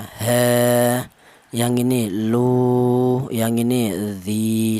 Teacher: Panjangnya sama yaitu 1 alif atau 2 harokat atau 2 ketukan ya. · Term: matobi